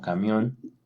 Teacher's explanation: todas estas son palabras agudas porque tienen su sílaba tónica en la última sílaba